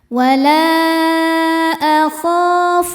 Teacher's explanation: kho hukumnya mad thobi'i zohiri karena ada alif sebelumnya baris fathah cara bacanya panjang dua harakat